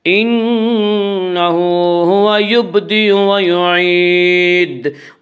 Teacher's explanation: جب ہم یعید پر وقف کریں گے تو دال ساکن ہو جائے گا، اور جب دال ساکن ہوگا تو دال میں قلقلہ ہوگا